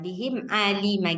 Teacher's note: ainnya itu keluar daripada tengah tenggorokan